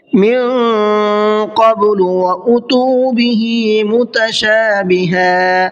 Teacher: حمزہ کو جلدی پڑھنا ہے اور تا کو کھینچ کر کے پڑھنا ہے. متشابہا یہاں پر بھی دیکھیے میں وقف کس طرح سے کیا ہے, دو زبر پر سانس توڑا ہے تو ایک زبر کو ہٹا دیا ہے اور ایک زبر کے ساتھ میں الف پڑھا ہے.